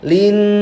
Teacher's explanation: gunnah masyaddadah, nun bertasydid masuk hidung